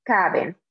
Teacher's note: Make sure when you're pronouncing that you're putting that stress on the right part, on the second to last vowel, not the last vowel. So we don't say caben, but we say caben.